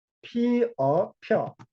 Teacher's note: 이 플러스 어가 여가 된 겁니다. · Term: 모음 축약